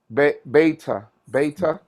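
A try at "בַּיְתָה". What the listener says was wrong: Beta. Very good. Beta or baita. Both are good.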